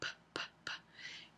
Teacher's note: la p p p es una consonante bilabial oclusiva sorda Entonces bilabial porque se tocan los dos labios el labio inferior y el labio superior hay es una oclusiva porque hay un cierre completo y finalmente